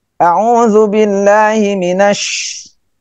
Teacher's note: bedanya shin itu ada khusus tapasi. Tapasi udaranya lebih banyak keluar. Ya, lebih banyak keluar.